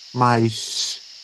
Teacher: é como se fosse um uma cobrinha ou um S bem alongado